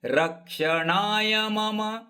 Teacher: ರ ಮೇಲೆ ಅಘಾತ ನ ದೀರ್ಘ